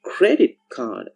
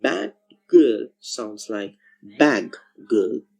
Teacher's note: the sound t and d change to k or g whenever they are followed by the sounds k or g.